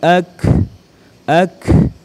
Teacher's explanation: Huruf kaf ini bukan huruf qalqalah, maka saat disukun jangan dibaca pantul.